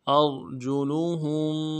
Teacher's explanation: حمزہ کو را کے ساتھ ملانا ہے، را کو موٹا کریں گے